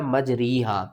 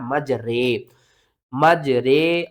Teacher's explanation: खड़ी ज़ेर को हमने रा खड़ी ज़ेर री नहीं पढ़ना है, इसको हमने पढ़ना है रा खड़ी ज़ेर रे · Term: इमाला